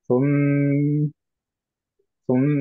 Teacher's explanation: এইটা বোঝানোর জন্য যে একটা মিম না দুইটা মিম সুকুনে, সেটার জন্য আমাদের এটা গুণনা দিয়ে এন্ড করতে হবে। তো পড়তে হবে সুম, সুম, এটা শুধু সুম বললে হবে না।